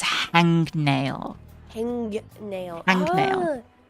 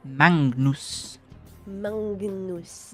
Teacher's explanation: So it's actually an ng, like a ngn sound.